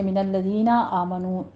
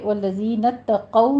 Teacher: آگے والذین اتقوا میں تاکہ پر تشدید ادا کیجیے لیکن موٹا نہیں کرنا، قو کو پر پڑھنا ہے، واؤلین ہے، ہونٹوں کو ناتمام گول کرتے ہوئے ادا کرنا ہے